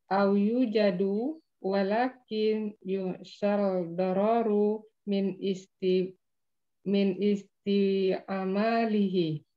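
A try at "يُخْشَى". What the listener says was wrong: Coba Bu perhatikan setelah kata yukhsha. Setelah kata yukhsha, ya ini panjang pendeknya juga perlu dibiasakan ya Bu. Setelah kata sesudah yukhsha, ada panjangnya enggak?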